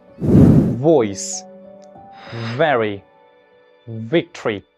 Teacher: Lower lips touch the upper teeth, air continues to flow, friction is produced, but this time your vocal cords vibrate. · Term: voiced labiodental fricative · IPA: /v/